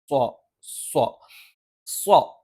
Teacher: നാവിന്റെ മുൻഭാഗം ഒന്ന് മടക്കിവെച്ച് അതിൻറെ ഒരു മുകൾഭാഗമാണ് രണ്ടു വരി മുൻപല്ലുകൾക്ക് പിന്നിലായിട്ട് വരുന്നത് അതോടൊപ്പം നാവിന്റെ മധ്യഭാഗം മുകളിലേക്ക് ഉയരും പക്ഷേ അതിന്റെ മുകൾഭാഗത്തുള്ള അണ്ണാക്കിൽ സ്പർശിക്കില്ല സോ